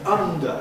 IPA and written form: ˈʌndə (under)